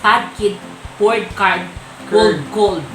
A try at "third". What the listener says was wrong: She mispronounced the third. She said card, but it's third.